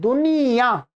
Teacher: यह जो य और आ को हम कैसे बोल रहे नासिका से भी बोल रहे हैं